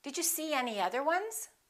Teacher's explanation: we insert a very little y and a very little w sound between two vowels